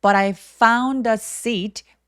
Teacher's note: T가 굴러가는 소리가 나는 이유는요 모음 소리들 사이에 끼어 있기 때문입니다